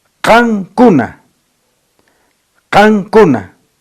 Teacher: en el campo fonético, los hablantes dicen qancuna, qancuna. Allí aparece la N velar.